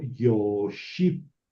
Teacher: La vav dejó de funcionar como consonante. Ahí está una vocal, es una O larga.